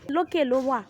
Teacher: It is the flying tone, it goes up. It is like a bird that flies in the sky.